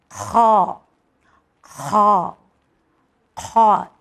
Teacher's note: یہ حلق کے فرسٹ پارٹ سے ادا ہوگا